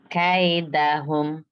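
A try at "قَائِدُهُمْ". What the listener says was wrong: K-nya nggak boleh K. Jangan kelebihan. Biasa aja. Iya, jadi kaf itu kita malah harus berhenti untuk K gitu nggak boleh ya. hams, memang harus hams, harus. Karena baca K nggak pakai hams pasti susah.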